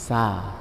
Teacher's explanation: Ketika diucap, pangkal lidah ini tidak bersentuhan dengan langit-langit, maka dikatakan istifal. Sa. Bibir juga terbuka, infitah.